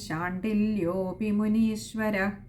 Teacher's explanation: ശാണ്ടിലയോപി അവിടെ ഒകാരം നീട്ടി എടുക്കുക